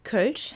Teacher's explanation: You form your lips to say O, but you're actually saying E.